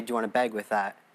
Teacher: the northern cities Val shift of the northern United States is having bag sound more like beg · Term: northern cities vowel shift